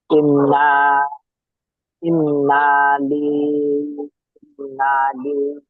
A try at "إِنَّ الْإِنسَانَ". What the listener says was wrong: ইন না নেই, দেখেন, ইন না নেই, ইন নাল, হামজা নুন জের ইন, নুন লাম জাবার নাল, ইন নাল ইনসানা।